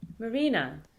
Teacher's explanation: the high comes later in the word and is timed closely with the penultimate syllable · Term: pitch accent